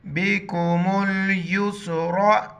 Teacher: रा पर ज़बर, रा को मोटा पढ़ेंगे